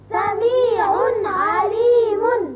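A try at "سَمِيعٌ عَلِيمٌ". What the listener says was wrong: دیکھیے تنوین جو نون اظہار ہوتا ہے یہاں تو اچھی طرح اظہار کریں گے ہم، سمیع نہیں کرنا، یا سمیع یہ بھی آواز غلط ہے. سارا دار و مدار اس کی نطق کا جو ہے وہ آواز پر ہے، لہذا جو آواز جہاں جس حرف کی جیسے نکلتی ہے اس کو آپ ذہن نشین کرتے جائیں گے تو انشاءاللہ آپ کے لیے آسانی ہوگی. سمیع علیم.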